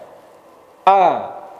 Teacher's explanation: Lidah kita tetap di bawah, maka disebut dengan istifal. Lidah tidak naik.